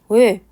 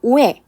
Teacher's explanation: 입 모양은 오로 고정하시면서 발음만 소리 나갈 때 발음만 에로 나가게 하는 거죠. · 입술이나 혀가 고정되어서 움직이지 않게 발음하는 게 맞는 거죠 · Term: 단모음